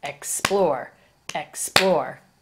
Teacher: accented syllable is the second syllable explore explore the second syllable is accented more emphasis